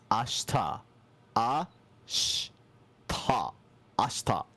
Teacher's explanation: There's this thing in Japanese called high vowel devoicing, and that's the whole reason why we don't really say the E sound there. But all you have to know for right now is that if it sounds like people aren't really pronouncing the E or the U in some words, probably they're not.